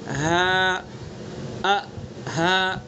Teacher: ہاں کا بھی اور حمزہ کا بھی دونوں حلق سے ادا ہوں گے، لیکن حلق کے آخری سینے کی طرف والے سے ادا ہوں گے. ہاں، ہاں سینے کی طرف سے ادا کریں گے